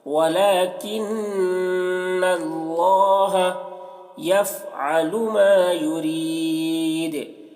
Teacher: یہاں پر نون مشدد ہے تو نون میں غنہ ہوگا